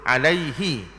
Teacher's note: Jadi bagi bawah ni dia bunyi hi. Dia tak bunyi he.